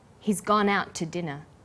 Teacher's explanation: The t sound is pronounced only once.